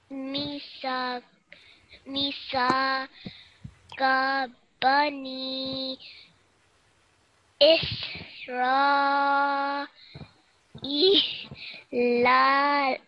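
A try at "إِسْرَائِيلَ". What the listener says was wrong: So this la, just 1 second. And next la, 2 seconds. So it will be Isra la la.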